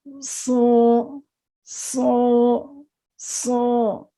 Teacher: یہ موٹا پڑھیں گے اور اس میں بھی سٹی کی آواز پائی جائے گی